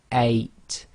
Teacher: However, if you were to say any letter beginning with one of the English vowel sounds, so for instance the letter A, if you say 8 but say it very slowly, 8, you should feel that your throat blocks a tiny bit right at the beginning. That's known as the glottal stop. · you should feel that your throat blocks a tiny bit right at the beginning that's known as the gloal stop so in Arabic that's represented